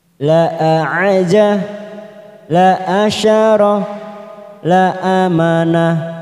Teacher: La aja, la asyarah, la amanah. Ya, semuanya dibaca pendek karena lam alif di sini sudah berfungsi sebagai lam dan hamzah